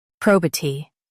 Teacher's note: emphasize pro and keep B light